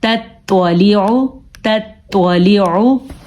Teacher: تا کو ہم نے باریک پڑھنا اور توا کو پر پڑھنا ہے